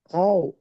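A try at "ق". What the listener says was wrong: அது ஹவ் அல்ல. ஹா சவுண்ட் இல்லையே. அது ஹா வந்து காத்து. கவ். காவ் அல்ல. கவ். கவ். கவ். காவ் அல்ல.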